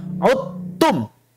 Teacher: Jadi kalau ada huruf dal bertemu tak, langsung ucapkan taknya secara sempurna, hilangkan dalnya 100%. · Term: idgham kamil